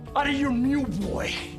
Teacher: we often remove the F or V sound in of also the T because it is between two vowel sounds becomes the American T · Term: connected speech